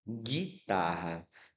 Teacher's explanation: Eu escuto o som do U? Não, eu escuto apenas o som do G, do I, do T, do A. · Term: dígrafo